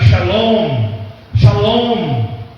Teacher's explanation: então a gente pronuncia um M, bem fraquinho